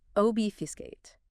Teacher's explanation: Three syllables, stress on the first.